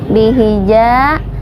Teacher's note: ja ini dibaca panjang 2 harokat karena hukumnya mad tabi'i. Ada alif bertemu dengan pasangannya yaitu fathah.